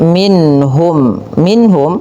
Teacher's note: minhum ada bacaan izhar halqi, suara nunnya dibaca dengan jelas